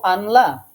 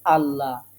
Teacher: লামে তাসদিদ নেই তাহলে আমরা কি এখন পড়বো আনলা না বরং লামের উপর এখন একটি তাশদিদ কল্পনা করে নিয়ে নুন সাকিন বাদ দিয়ে পড়তে হবে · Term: নুন সাকিনের ঈদগাম